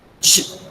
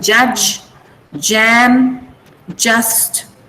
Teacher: The sound is j. So when you say j, can you feel the tongue going up and then the blade of the tongue touching the teeth ridge?